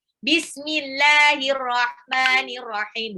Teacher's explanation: lafaz Allah dibaca tarkik, dibaca tipis, apabila sebelum lafal Allah itu harokatnya kasroh